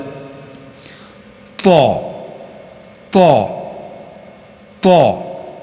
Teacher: موٹی اور منہ بھر کر اس کی آواز نکلے گی، یعنی پر آواز نکلے گی۔